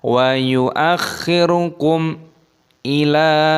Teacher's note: Roknya sukun maka dimatikan, wa yu'akh, masuk ke khok, wa yu'akhir, roknya masukun mati. Kum ila, mim sukun bertemu dengan alif idhar syafawi, dibaca jelas, tidak boleh didengungkan.